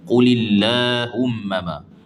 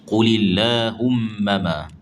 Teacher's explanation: Lam tu pula kena nipis kerana sebelumnya baris baris bawah.